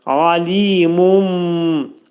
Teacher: Burada demək, alimun dedikdə ayn hərfi boğaz hərfidir. Bunu boğazın ortasından çıxarırıq.